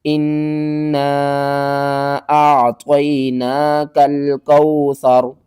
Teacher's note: اعطینا، کاف لام زبر کل، کاف واو زبر کو، کل کو، سا زبر سا، را زبر را، سارا، اعطیناک الکوثر۔ وقف کی صورت میں را کے اوپر جو زبر ہے اس کو ختم کریں گے، را کو ہم ساکن کر دیں گے۔